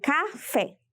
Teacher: veremos que temos a última sílaba fé EA penúltima sílaba cá Qual é a sílaba tônica de café é a sílaba fé e é a última sílaba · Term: oxítona